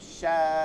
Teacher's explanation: টান দিয়া চার আলিফ টান দিয়া হামজার যেমন ধাক্কাটা ওঠে না ওরকম হবে।